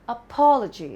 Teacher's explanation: The stress is on pa. The first part is the schwa sound